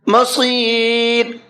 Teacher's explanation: صاد کو پر کر کے پڑھنا ہے اور را کو باریک کر کے پڑھنا ہے، اس لیے کہ را ساکن سے پہلے یا ساکن ہے اور را ساکن سے پہلے یا ساکن ہو تو را ہمیشہ باریک پڑھی جاتی ہے۔